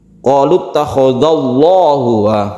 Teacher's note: Lillahi, kalau ini qalu takhadallahu, tebal ya, tebal. Karena lafaz Allah yang didahului dengan fathah itu kita baca tafkhim atau tebal.